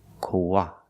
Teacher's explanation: Koala, koala. When we link the O and the ah, koa, we have the w sound in the middle